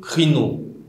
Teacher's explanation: Sa consonne initiale, c'est le kappa, une consonne occlusive.